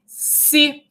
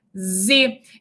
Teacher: esse som de S, ele é o som surdo que passa para o seu fonema homorgânico, Z, que é o fonema sonoro. Então, esse som de S, ele é surdo.